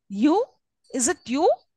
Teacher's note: the third syllable is more prominent than the other two and carries a rising tone